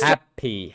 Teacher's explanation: First syllable should be louder, longer. >> Louder, longer, and higher. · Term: word stress